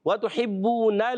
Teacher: ہا کی ادائیگی حلق کے درمیان والے حصے سے، با مشدد ذرا رک کر ادا کریں گے